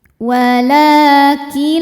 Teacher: Lalu ada hukum idgham bila ghunah karena nun sukun bertemu dengan huruf lam. Cara bacanya nun dileburkan atau dimasukkan ke lam tidak disertai dengungan.